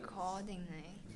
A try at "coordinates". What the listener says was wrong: Coordinates. That's right. Add the S on the end.